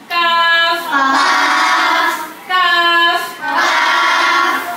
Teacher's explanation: জিহ্বার গোড়া থেকে একটু আগে বাড়িয়া তার বরাবর উপরে তালুর সঙ্গে লাগাইয়া মধ্যখান পেঁচানো কাফ